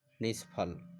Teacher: विसर्ग के बाद च है तो तालव्य, तो इसका परिवर्तन हो गया तालव्य स में, अर्ध में। विसर्ग के बाद फ है तो विसर्ग किस में बदलेगा? मूर्धन्य स, अर्ध में, मतलब आधा में।